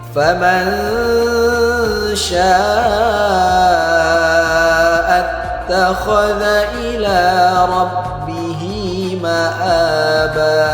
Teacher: nun sukun berjumpa dengan huruf sya. Maka hukumnya ikhfa. Cara bacanya kita samarkan dan kita dengungkan dua harakat